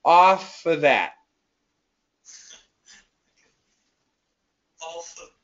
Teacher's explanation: when we have the word of and the next word is a consonant we can actually cancel the V sound